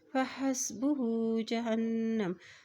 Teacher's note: हा उल्टा पेश हु को एक हरकत लंबा अदा करेंगे। फ़हस्बुहु जहन्नम, हा के ज़बर को जब नून के साथ मिलाएंगे क्योंकि नून के ऊपर शद है, जब भी नून के ऊपर शद आती है तो वहाँ पर गुन्ना अदा किया जाता है।